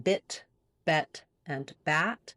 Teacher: three placements there with the I being the highest and the a being the most open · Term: lax vowels